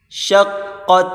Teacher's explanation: بڑی قاف اس کو موٹا کریں گے، تا کے ساتھ ملا کر پڑھیں